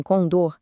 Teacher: Se a força tá na última sílaba como em condor, a palavra é oxítona.